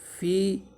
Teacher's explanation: فا یا زیر فی حروف مدہ ہے یا، تو اس کو ایک الف کے برابر لمبا کریں گے